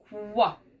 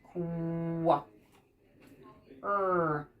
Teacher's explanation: This is like a K and a W sound. Our voice is off for the K part, and then wa is on. Kwa. I like to tell our kids our teeth are together for this one.